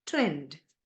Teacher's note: front unrounded vowel between half close and half open